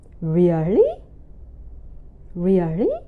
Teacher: And the first part, real, is the second tone, the falling tone, and the final part, li, is the third tone, the high rising tone.